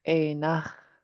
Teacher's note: you have an underline X that's pinched, so it'll be sharp and in the back of your throat.